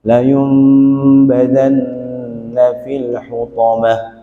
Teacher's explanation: Maka nun sukun itu seperti bunyinya dirapatkan bibirnya. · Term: iklab